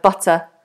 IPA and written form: bʌtə (but a)